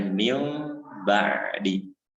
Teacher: Nah, hurufnya itu nun tapi pembacaannya ditukar menjadi mim. Tulisannya min ba'di misalkan, tapi dibacanya mil ba'di. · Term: iqlab